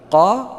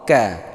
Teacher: Kalau qaf lebih ke belakang, kalau kaf lebih ke depan sedikit.